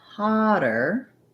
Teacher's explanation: the length of that first syllable stressed and then the er or the est really short